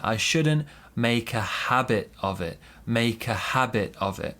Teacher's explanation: So here we have a big stress on habit, small stress on make.